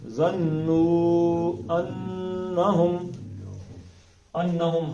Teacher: نون کو 2 حرکتیں کھینچنا، زبان تالو کے ساتھ لگا کر. ظَنُّوا أَنَّهُمْ ہا کو سینے کی طرف سے نکالنا ہے.